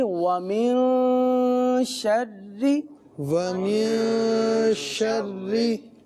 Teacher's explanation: جب تجدید کے ساتھ را پر زیر ہے تو تب بھی اس کو باریک ہی پڑھیں گے